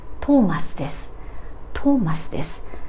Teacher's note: this u is still devoiced, even though it comes before d, a voiced consonant. These kind of things only occurs to shi and su.